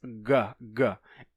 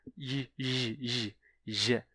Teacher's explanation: em vez de pronunciar o som de G, com a língua lá atrás, G, G, o som da letra G, que era G, foi puxado pra frente, pra j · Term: palatalização